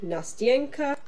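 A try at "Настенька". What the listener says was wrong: Nastinka. Nastinka. Not Nastyenka. You're saying it like it's on the wall. It's Nastinka.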